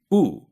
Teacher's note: If you compare the English vowels E and U, for instance, you'll find that for E, your tongue is all the way up and in the front of your mouth, E, and for U, the tongue is all the way up but in the back of your mouth, U. So if you gradually slip from E to U, E-U, your tongue will move from the top front to the top back, E-U.